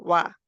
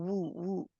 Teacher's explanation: पहले गोलाई की तरफ जाते हैं, होंठ गोल आते हैं, फिर खोलते हैं वा। लेकिन अगर पेश वाली हो तो वो खोलते नहीं है, फिर ऐसे वू गोल ही रहते हैं।